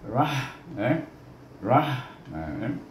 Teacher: ra baris di atas bertemu dengan ha yang mati, di bunyi dengan hamas